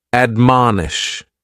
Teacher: admonish has three syllables and the stress is on that second syllable